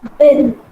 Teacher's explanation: When you say bin, when you touch throat, there should be a kind of vibration you can feel. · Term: voiced